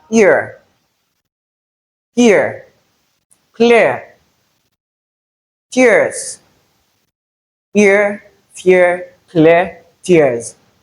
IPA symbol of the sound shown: ɪə